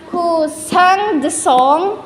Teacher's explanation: the word song is getting weakened because the speaker wants certainty in a sentence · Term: falling intonation